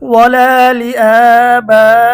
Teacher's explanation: এটা মধ্যে মুত্তাসিল 4 আলিফ টানতে হবে। ওয়ালা লিআবাইহিম, কাফ জবর কা বা পেশ বু, কাবু রতা জবর রত, কাবু রত।